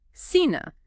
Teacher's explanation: But when it's followed by e or i, well, the pronunciation shifts. It's an s sound in most of Latin America.